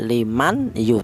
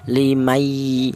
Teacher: Ini definisi idgham atau makna lain itu menyatu atau melebur. Yaitu cara bacanya nun mati ini langsung menyatu atau dilebur ke huruf ya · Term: idgham bighunah